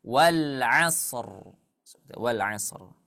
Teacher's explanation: Kemudian sebelumnya bertemu dengan huruf isti'la. Huruf shad adalah huruf isti'la. Ditambah sebelumnya berharokat fathah, maka ra-nya dibaca tebal. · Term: ra tebal